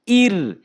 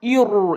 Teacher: বারিক করে পড়বেন, মানে পাতলা করে পড়বেন, মানে মুখ ওসার করে পড়বেন